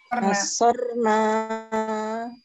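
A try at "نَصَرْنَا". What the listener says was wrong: Nasornya. Nah, pendek nanya Nasor. Nasor. Oh, enggak usah. Pakai nun aja nih. Nasorna, nanya pendek.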